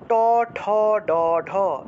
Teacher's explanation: এই সকল বর্ণ উচ্চারণের সময় আমাদেরকে অটোমেটিকভাবেই জিহ্বা উল্টাতে হয়। ট উচ্চারণ করলে জিহ্বা উল্টাতে হয়, ঢ উচ্চারণ করলে জিহ্বা উল্টাতে হয়। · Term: মূর্ধন্য